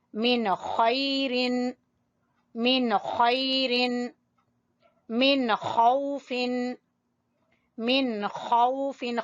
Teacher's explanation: جو حلق کا سب سے اوپر والا حصہ ہے منہ کے قریب وہ ہے ادنا حلق، وہاں سے خا ، من خیر، من خیر، من خوف، من خوف، خا ادنا